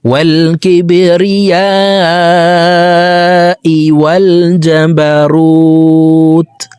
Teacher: রু এখানে 3 আলিফ টেনে তাকে সাকিন করে ফেলবো, কারণ পেশের বাম পাশে জজমালা ওয়াও মদার হরফ, তো এই মদার হরফের বামের হরফে ওয়াকফ হইলে মুদ্দা আরজি 3 আলিফ টেনিয়া পড়িতে হয়।